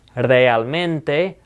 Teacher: I'm also rolling that R because the word starts with the letter R